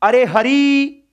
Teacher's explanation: जैसे आपने आवाज दी, अरे हरी, अब हरी में ई छोटा था वैसे तो, लेकिन आपने जब दूर से बुलाया तो ई क्या हो गया, लंबा हो गया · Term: प्लुत